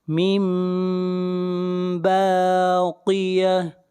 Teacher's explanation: یہاں پر نون ساکن کے بعد با ہے، اس لیے یہاں پر اقلاب کریں گے، یہاں پر نون لکھا ہوا ہوگا لیکن پڑھیں گے میم کو